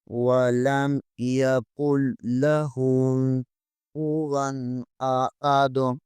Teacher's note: غنہ نہیں ہوگا، احد اور دال کے اوپر دو پیش ہے، آگے وقف ہے، اسے ساکن کریں گے اور دال پر قلقلہ کریں گے